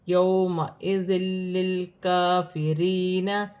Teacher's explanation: واو ساکن سے پہلے زبر ہے، واو لین بنے گی، اسے کھینچا نہیں جائے گا، دو زیر کی تنوین کے بعد لام مشدد آ رہی ہے، تنوین میں غنہ نہیں کیا جائے گا۔ · دو زیر کی تنوین کے بعد لام مشدد آ رہی ہے، تنوین میں غنہ نہیں کیا جائے گا۔ یومئذ للکافرین، کاف پر کھڑی زبر ہے، ایک الف کی مقدار کھینچ کر پڑھا جائے گا، یا ساکن سے پہلے زیر ہے، یا مدہ بن رہی ہے، اسے ایک الف کی مقدار کھینچ کر پڑھا جائے گا۔